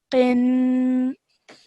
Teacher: Okay, so gunna sound, again, like we practiced in the previous surah, it's a 2-second nasal sound that you have to produce